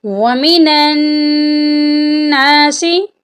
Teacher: نون مشدد ہے، نون پر ہم غنہ کریں گے۔ غنہ کا مطلب ہے ناک میں آواز لے جانا